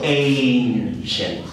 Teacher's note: Now the A, it starts to take on a bit of the sound from the N.